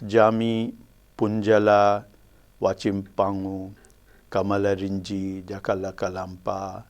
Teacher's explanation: in all these words you will notice that the initial syllable has primary stress and then there are alternate syllables which are secondary which have secondary stress